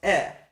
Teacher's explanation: in modern Hebrew, a schwa, which is a vocal schwa, is just pronounced eh